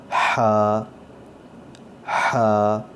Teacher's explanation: اس حرف کو درمیان حلق سے اس کی آواز نکلے گی, اور جس طرح پریشر کے ساتھ ہوا نکلتی ہے اسی طرح پریشر سے اس کی ہوا کی آواز آنی چاہیے. اور اس کو ہا نہیں پڑھیں گے, اس کو ہم ہا ہا, اس طرح سے اس کی حلق سے آواز آنی چاہیے.